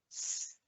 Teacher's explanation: It's a quiet, long sound. And I can feel my tongue, the tip of my tongue, touching the top of the roof of my mouth.